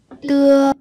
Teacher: Tưa nhưng mà không bật hơi nhá, nhẹ nhàng thôi. Tưa. Tưa nhẹ nhàng nó không bật hơi.